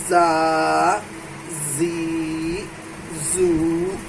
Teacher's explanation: نیچے کا دو دانت سامنے کا، وہ ثنایا سفلی کہلاتا ہے۔ تو زبان کی نوک ثنایا علیہ اور ثنایا سفلی سے ٹکراتی ہے تو زا ادا ہوتا ہے